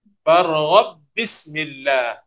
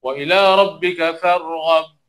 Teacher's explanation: Jadi ba yang pertama dimasukkan pada ba yang kedua. Oleh kerana ba pertama masuk pada ba yang kedua, ba pertama tak diletakkan tanda sukun. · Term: Idgham mutamathilain